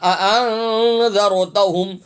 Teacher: انذرتہم، ان پڑھنا، دو حمزہ پڑھنا، انذرتہم، ہا میم پیش ہم، ہا سینے سے ادا ہوگا